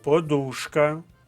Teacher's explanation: наголос на другому складі